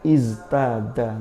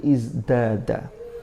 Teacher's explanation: Lalu kalau ta ini mahmus, sehingga ini ada sifat yang berbeda. Maka karena ada pengaruh dari za yang majhur, maka taknya berubah menjadi dal yang juga memiliki sifat jahr. Sehingga dari iztada menjadi izdada. · Tahawwala at-ta'u ila ad-dal litamatsuliz zai fil jahr. Jadi taknya berubah menjadi dal. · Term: mumatsalah